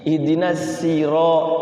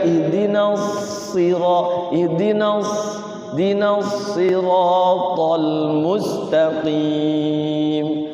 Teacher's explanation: So itu si lidahnya kan isti'la ya, isti'la. Maka si lidahnya ngangkat.